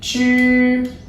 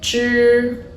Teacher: The tip of your tongue curl back and to touch the alveolar ridge, which is a little bit up of your teeth, so around here, and your tongue body is close to the hard palate.